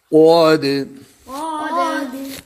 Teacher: قد قاف موٹا، دال پر قلقلہ